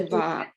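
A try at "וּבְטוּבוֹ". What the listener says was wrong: It's an ooh at the beginning.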